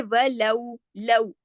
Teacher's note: یہ واو لین آ گیا، لا سے لو ہو گیا، موڑ پیدا ہو گیا